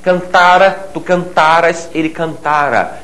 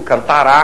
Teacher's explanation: O RA, átono, se fosse tônico seria futuro